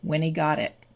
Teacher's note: The final T of got. It's surrounded by vowel sounds, so it becomes a D, and then it moves over.